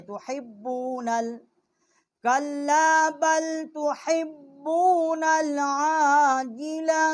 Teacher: با جو ہے یہ ہونٹوں کے تری سے نکلتی ہے